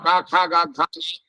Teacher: കണ്ഠത്തുനിന്ന് പുറപ്പെടുന്ന വർണ്ണങ്ങൾ അകാരം കവർഗം വിസർഗം